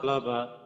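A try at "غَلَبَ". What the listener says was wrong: জি, একটু তাড়াতাড়ি পড়তে হবে, যেহেতু আমাদের হারাকাত তাড়াতাড়ি পড়তে হয়। কাতাবা, কাতাবা, জামা, জামা, জামা। জি, আর এই জিনিসটা খেয়াল রাখতে হবে, আমাদের মোটা হরফ যখন আমরা আসবে সামনে, তখন এই রাকা র, এখানে গিয়ে আমরা অনেক সময় এটা সমস্যা, শুধু আপনার না, এটা অনেকেরই হবে।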